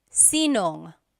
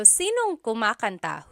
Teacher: If you have sino ang in a question, you might hear sinong. So they put it together.